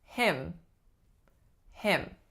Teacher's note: So the vowel in this word is a lax I.